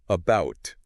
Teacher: almost lazy vowel sound that we use in unstressed syllables